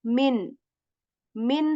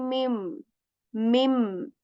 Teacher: right if after noon Sak or tan comes letter ba then we simply change the sound of the noon to letter mem